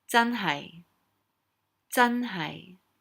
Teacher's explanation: the 真 is high tone, high falling, and the 係 is low